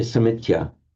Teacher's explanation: Samitya is just a phonetic feature, the insertion of that t before the y.